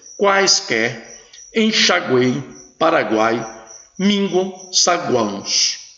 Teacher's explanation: Veja que a vogal fica entre 2 semivogais. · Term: tritongo